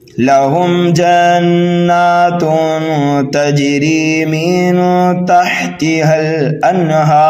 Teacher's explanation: یہاں پر ہم را کو دونوں صورتوں میں پر پڑھیں گے، چاہے وقف کریں یا ملا کر کے پڑھیں. ٹھیک ہے، تو را کو ہم ساکن کر دیں گے، یہاں پر ہو رہا ہے وقف بالاسکان اور مد عارض کا قاعدہ بھی یہاں پر اپلائی کیا جائے گا.